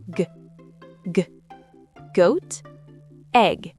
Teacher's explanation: Le G est la version sonore du cas. Il doit être bien net.